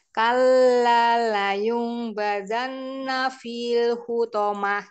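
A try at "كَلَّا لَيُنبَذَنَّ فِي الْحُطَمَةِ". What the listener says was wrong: Fokusnya di nafi ternyata di layung mbak. Layungnya kurang lama ya. Sama ini kadarnya ya. Seperti nun tasdid.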